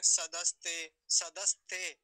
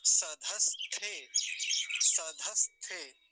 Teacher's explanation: जो लोग गलत उच्चारण करते हैं, सदस्ते, सदस्ते ऐसा कह देते हैं, धकार का दकार कर देते हैं, थकार का तकार कर देते हैं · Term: महाप्राण